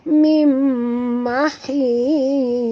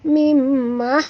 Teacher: Jangan sebut mim mahid, bukan mahid bunyi dia. Mim mahils, tebal, ya. Hils. Kalau tuan-tuan tipiskan dia jadi sin, mim mahis, kan bunyi sin. Ini huruf sad, ya.